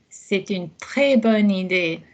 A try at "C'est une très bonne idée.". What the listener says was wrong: Lovely.